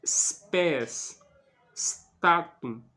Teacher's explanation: não se pronuncia statum como se fosse um e no início da palavra não pode espes não se pronuncia assim né É spés statum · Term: s impuro